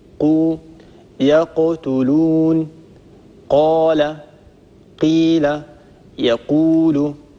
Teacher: أقصى اللسان مع ما يحاذيه من الحنك اللحمي. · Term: القاف